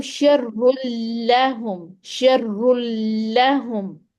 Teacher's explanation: रॉ को मोटा करना है, लेकिन फौरन बाद जो जुबान है वो लाम के मखरज पर जाके ठहरा देनी है, ताकि लाम मोटा ना हमारा हो जाए।